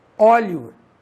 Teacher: O E tem som de I e o O tem som de U.